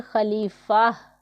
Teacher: اگر یہاں پر ہم وقف کریں گے جیسے کہ یہاں وقف ہوگا تو اسے پڑھیں گے خلیفہ، تا کو پھر ہاں میں ہم بدل دیں گے